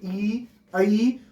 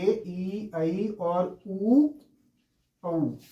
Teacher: और इसी के अपोजिट ऐसा कौन सा है जिसको बोलने पर मुख द्वार बंद हो, लगभग लगभग बंद हो, लगभग बंद हो, इसको पूरा बंद नहीं कहते। जैसे ई, ई में बहुत थोड़ा सा खुलता है, मतलब बिल्कुल ही खुलता नहीं है, बस बंद ही रहता है, जीभ उसको ढक लेती है